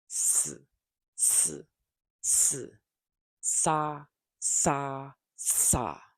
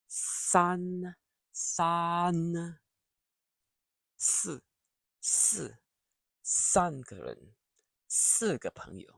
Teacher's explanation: Now we go to the final sound, the S sound. This is a clear forward hiss. Keep the tongue flat. Do not curl it back.